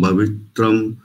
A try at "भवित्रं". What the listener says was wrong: बढ़िया, भवित्रम नहीं करेंगे यहाँ पर, भवित्रन